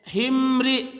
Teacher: mim mati bertemu dengan ro itu tidak ada hukum yaitu izharnya izhar syafawi jadi tidak ditahan cukup rapatan